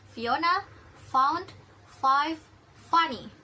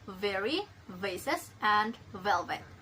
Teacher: For the f, there are Fiona found 5 funny, and for the v, there are very, vases, and velvet. So F is voiceless labiodental fricatives and V is voiced labiodental fricatives